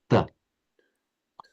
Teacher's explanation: the T is the dental sound where the the tip of your tongue is against the back of your teeth just touching the the back of your teeth. T. And that would the way this the way for example the French and the Italians spray more like a but the anatomically then you have to bring the tip of your tongue back um just behind the ridge of the teeth.